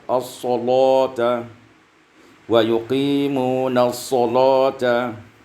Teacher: dibaca tebal lam karena terletak setelah sad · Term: taghlidul lam